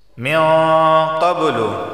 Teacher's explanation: مِن قبل، نون ساکن کے بعد قاف آیا ہے اور قاف حروف اخفا میں سے تو اخفا والا غنہ ہوگا۔